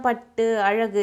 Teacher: சொல்லும்போது குற்றியல் உகரம் இதுல வர உயிர் எழுத்து பின்னாடி வருது இல்ல இந்த குற்றியல் உகரத்துக்கு அரை மாத்திரை அளவுதான் ஒலிக்குது